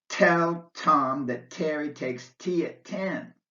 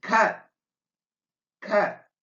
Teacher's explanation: the T is not aspirated at the end of a word if that word comes at the end of a sentence. This means that your tongue touches the bony ridge behind your upper teeth to make the T sound, but there's no puff of air at the end. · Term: non aspirated T, non-aspirated T